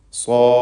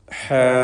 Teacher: അപ്പോൾ സ്വ എന്ന് പറയുമ്പോൾ അലിഫ് മുഫഖം, ഹ എന്ന് പറയുമ്പോൾ അലിഫ് മുറഖഖ്.